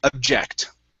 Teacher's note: this word is object with the stress at the end